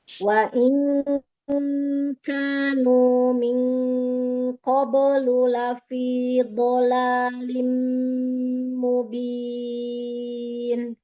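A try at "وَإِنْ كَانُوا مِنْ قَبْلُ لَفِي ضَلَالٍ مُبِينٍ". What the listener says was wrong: Tebalkan lagi ifa nun sukun ketemu qafnya. Min qablu.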